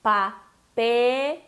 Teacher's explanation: não é aquele E abertão que nem do português. É mais fechado.